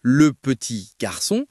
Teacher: tu dois accentuer la syllabe son à la fin